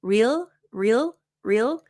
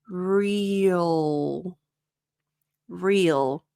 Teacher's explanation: I like to think about it as like not two syllables, but it's like a syllable and a half. So it adds a little bit.